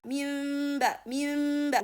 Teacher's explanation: We read the noon as a mim when it comes followed by ba. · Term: iqlab